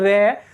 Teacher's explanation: हमारी जीभ जो होती है वो तालू से लुढ़कते हुए आती है, तालू से लुढ़कते हुए नीचे आती है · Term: लुंठित